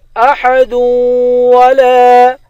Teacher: دال کو واو کے ساتھ ملا کر واو پر غنہ کریں گے